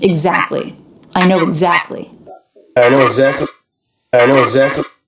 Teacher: when t comes between two consonants it's really common in American English to drop it